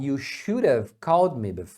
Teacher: Aqui o d ele se torna um r